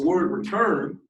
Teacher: So in the word return, the stress part is turn.